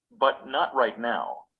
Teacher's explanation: The voice jumps up in tone on the most important word and then falls to a low tone. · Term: final intonation